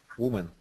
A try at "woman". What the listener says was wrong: Woman, there you go.